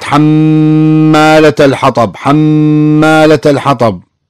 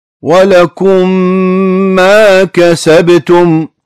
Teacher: ولكم ما كسبتم، ولكم ميم بعدها ما، كلمة ما كسبتم تبدأ بحرف الميم، ميم متحركة دخلت على ميم ساكنة إدغام المثلين، صارت ميم مشددة واحدة مع غنة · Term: إدغام المثلين الصغير